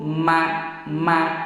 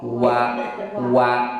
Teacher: Mim biwir dua wau oge biwir dua. Bentenna ari m biwirna nutuk ma ari wau mah biwirna muka molongo wa wa sahingga lamun ngucapkeun wau tapi biwirna teu molongo moal bisa eta teh nya.